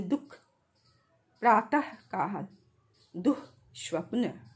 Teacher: विसर्ग का उच्चारण कंठ से होता है। विसर्ग का उच्चारण ह की तरह, जैसे दुख, प्रातःकाल, दुःस्वप्न, तो इसका उच्चारण ह की तरह होता है।